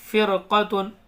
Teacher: رائے ساکنہ سے پہلے زیر ہے تو یہاں پر را باریک پڑھی جائے گی